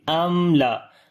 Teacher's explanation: On the meme we make tawassut quality, and after the meme there is lam, we make izhar shafawi, because after the meme sakin, if any other letter comes except of alif, ba and meme, so we make izhar shafawi there, and we read the meme sound clearly. We do not make gunna type sound, right? So we say amla.